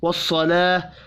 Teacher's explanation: کھڑی زبر کو ایک الف کے برابر کھینچ کر پڑھیں گے